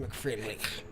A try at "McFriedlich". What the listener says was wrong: More phlegm when you pronounce it.